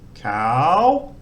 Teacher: same it's a high classical initial consonant it's still got a live vowel even though it's long so it's a rising tone but a long vowel